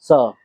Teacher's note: जब आप बोलेंगे स, तो जीभ दांतों के ऊपर या दांतों के बीच में टकराएगी